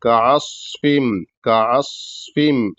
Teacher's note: कासफिम कासफिम छोटा काफ उसके बाद ऐन हलक से उसके बाद ऐन को स्वाद साकिन पे मिलाएंगे अस इस तरीके से स्वाद साकिन भी रहेगा और सीटी की आवाज भी रहेगी और मोटा भी रहेगा · اس طریقے سے صاد ساکن بھی رہے گا اور سیٹی کی آواز بھی رہے گی اور موٹا بھی رہے گا. کعصفم، کعصفم اس طریقے سے.